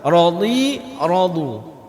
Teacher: Huruf dhad di sini yang pertama radhi. Dhad apapun barisnya tetap dibaca tebal. Radhi. Ke depan radu lebih tebal.